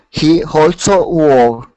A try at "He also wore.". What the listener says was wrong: Okay, so here you had said he also. So remove that H. He also. Go straight to that A sound, all. He also wore.